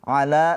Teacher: la panjang 2 harokat mad tabi'i ya.